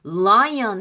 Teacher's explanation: 이빨하고 잇몸이 만나는 그 부위 lion 거기에 르 소리가 들어가요. 그래서 르가 비기닝일 때는 르 소리지만 L이 비기닝일 때는 르 소리지만 미들이나 중간이나 끝으로 갔을 때는 오 소리로 갑니다.